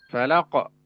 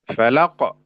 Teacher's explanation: Qo qo ya. Jadi q-nya sudah ada tambahan huruf hamzah di ujungnya.